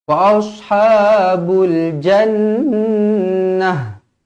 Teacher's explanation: Jannah, huruf ta marbutah, kalau kita matikan dia akan jadi huruf ha yang bertanda mati.